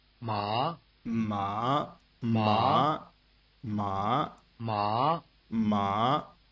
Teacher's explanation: It starts in the middle of your range and almost immediately rises sharply to the top of your range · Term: rising tone